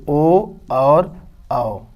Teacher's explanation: अब यहाँ ए का उच्चारण स्थान कंठ है और ओ का उच्चारण स्थान है ओष्ठ। तो कंठ और ओष्ठ के द्वारा बोला जा रहा है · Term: कंठोष्ठ